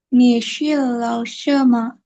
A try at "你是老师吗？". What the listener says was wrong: Ini SHI jadinya SHE. Nisi.